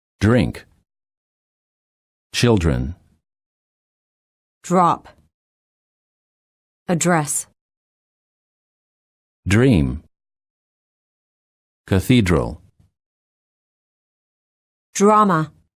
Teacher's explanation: D plus R sounds almost like dr sound. When the D is followed by an R, the D changes and becomes an almost j.